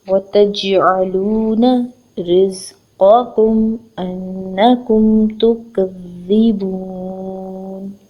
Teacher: واو کے اوپر ایک حرکت ہے، تا کے اوپر ایک حرکت ہے، جیم سکون کے ساتھ ملا کر پڑھیں گے اور جھٹکا دیں گے